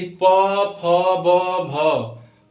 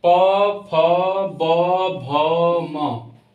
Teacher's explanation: प जब हम लोग बोल रहे हैं तो दोनों ओठ हम लोग का बंद हो जा रहा है, बिना ओठ बंद हुए हम लोग प नहीं बोल सकते हैं। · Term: ओष्ठम